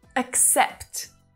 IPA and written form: ək'sept (accept)